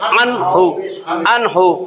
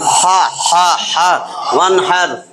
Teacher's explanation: নুন সাকিনের উচ্চারণ পরিষ্কার হইতেছে, কোনো গুন্না নাই